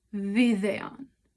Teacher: It's just kind of a blowing of air out between the lips, maybe like a tension between the lips.